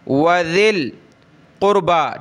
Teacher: یہ یا ہم نے نہیں پڑھنی، یہ ذال کو ڈائریکٹ ہم نے لام کے ساتھ پلس کرنا ہے، ملانا ہے. ذال لام زیر ذل، وذل قربا، ٹھیک ہے.